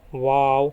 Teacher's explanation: इसे होठों को गोल करके अदा किया जाता है